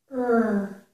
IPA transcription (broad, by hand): əɹ